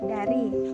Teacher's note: Yang keempat bunyi D. Ciri-cirinya hidup, oral, apikodental, dan plosif